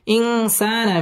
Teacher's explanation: সা মধ্যে তাবাই এক আলিফ টেনে পড়তে হবে